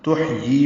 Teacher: تحیی میں ہا ساکن پہ ہمس ہے